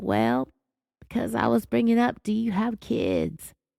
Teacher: she has her strong vocal fry again